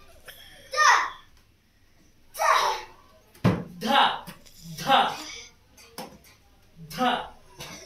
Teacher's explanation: ध हवा बाहेर येते